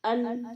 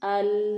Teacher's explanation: اس کے علاوہ جس بات کا خیال رکھنا ہے کہ لام کے اندر تھوڑی سی آواز جاری ہوتی ہے، آواز بند نہیں ہوتی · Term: صفت توسط